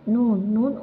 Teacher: জিহ্বার অগ্রভাগ তালুর সাথে লাগিয়ে উচ্চারিত হয়।